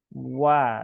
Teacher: maka ya ucapkan dengan tipis ya, dengan cara memonyongkan dulu di awal wa ya, bukan wa ya.